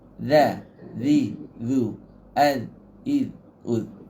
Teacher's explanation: huruf dia ni jahar. Tak ada angin. Dia rahawah. Suara lepas.